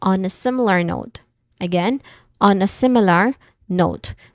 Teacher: Sim, first syllable is the stressed syllable here.